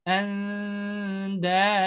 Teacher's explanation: Kalau dal kan ujung lidah bertemu dengan pangkal gigi seri bagian atas. Tapi nggak nempel, ya